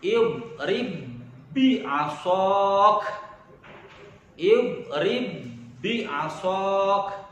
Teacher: Contoh seperti idgham mutamathilain, huruf ba bertemu dengan ba, maka menjadi satu huruf ba yang bertasydid dalam pembacaannya.